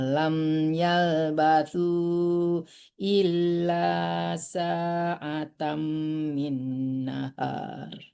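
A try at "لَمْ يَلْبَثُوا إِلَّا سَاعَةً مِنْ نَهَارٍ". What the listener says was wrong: Tuh, masih ngambil napas ya, nggak boleh ya. Sampai illa aja boleh berhenti ya.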